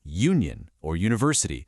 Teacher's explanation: A word like union or university begins with a glide j